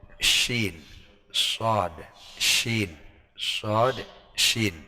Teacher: tekanan udaranya itu ditekan, giginya yang atas dan bawah itu merapat sehingga akan menyebar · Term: Tafashi